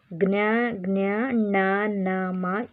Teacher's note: ಇವು ಮೂಗಿನ ಸಹಾಯದಿಂದ ಹುಟ್ಟುವುದರಿಂದ ಇವನ್ನು ನಾಸಿಕ ಅನುನಾಸಿಕಗಳೆಂದು ಕರೆಯುತ್ತೇವೆ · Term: ನಾಸಿಕ ಅಕ್ಷರಗಳು